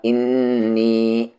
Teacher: نون پر شد ہے، غنہ ہوگا